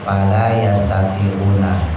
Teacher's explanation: Fala, lanya panjangnya 2 aja, matobi.